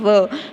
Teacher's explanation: फिर होता है दंतोष्ठो, तो इससे बोला जाता है केवल व, तो दांतों से और होठों से केवल व बोला जाता है